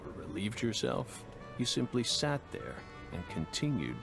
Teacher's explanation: he's really pouring on the vocal fry